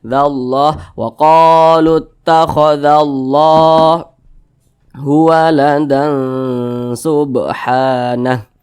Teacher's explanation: Maka di atas kalimat Allah ini ada alif kecil berdiri di atasnya, maka kalimat Allah dibaca panjang. Matobi'i panjangnya 2 harokat atau kira-kira 2 ketukan.